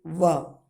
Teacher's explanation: हमारा जो निचला होठ है वह ऊपरी दांत से स्पर्श होकर छूटता है, तो वहाँ पे इस बकार की ध्वनि जो है उच्चारित होती है। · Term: दंतोष्ठ वर्ण